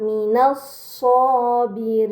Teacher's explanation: Ini dinamakan alif lam syamsiyah karena hamzah wasal pada alif lam dibaca fathah, lam pada lam syamsiyah tidak dibaca, langsung dibaca huruf setelahnya